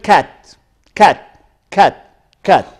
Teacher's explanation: in the word Cat Cat Cat Cat it is what front it is open front it is open it is short